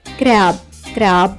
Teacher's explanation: సిఆర్ యొక్క ఉచ్చారణ మనం కర అని కాకుండా క్ర అని తీసుకుంటాం. గమనించండి ఉచ్చరణ [సంగీతం] కార కాదు క్ర అవుతుంది.